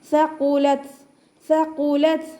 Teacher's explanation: അപ്പോൾ അതിനെ ഉയർത്തിയിട്ട് ഉച്ചരിക്കുക. ത സുക്കൂനിലാണല്ലോ, അപ്പോൾ നമ്മൾ കുറച്ച് എയർ പുറത്തോട്ട് പോണ രീതിയിൽ വേണം ഉച്ചരിക്കാൻ.